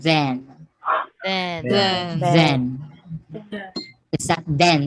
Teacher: can even feel it say saying [Music] okay the voice th we have the voice dental fricative